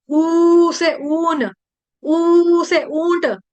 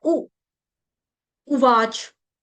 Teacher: अर्जुन उवाच, ऊ जो है छोटा है, इसको लंबा नहीं कर देंगे। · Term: छोटा ऊ